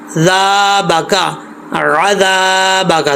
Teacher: दाल में सीटी नहीं आएगी, नॉर्मल पढ़ा जाएगा